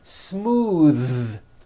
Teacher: Believe it or not, the TH sound in smooth is voiced.